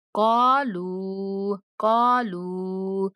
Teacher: काफ के बाद भी अलिफ मद्दा है और लाम के बाद भी वाव मद्दा है, तो हमने दोनों लफ्जों को थोड़ा खींच के पढ़ना है